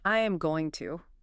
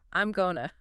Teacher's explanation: It gets crunched down into something much faster like two syllables. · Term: reductions